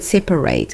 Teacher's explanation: The most common mistake swaps that middle A for an E, producing separates, which sounds identical in speech but is wrong in writing. The middle vowel reduces to a neutral schwa in conversational speech, which sounds equally like an A or an E.